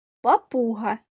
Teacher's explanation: три склади наголошений другий склад 3 приголосних звука і всі вони тверді